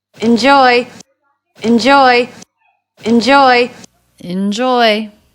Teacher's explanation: enjoy enjoy enjoy second syllable stress